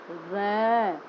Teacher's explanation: र बोलते समय हमारी जीभ जो है वो आगे से थोड़ी ऊंची उठती है और हमारे मुख द्वार को बंद करती है। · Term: लुंठित वर्ण